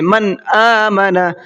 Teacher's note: حمزہ اظہار کے حرفوں میں سے ہے، تو یہاں پر اظہار کریں گے، نون کو صاف صاف پڑھیں گے۔ من آمن، من اس طریقے سے غنہ نہیں کریں گے۔